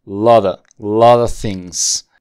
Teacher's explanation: Y al estar la T entre dos vocales, se vuelve una flap.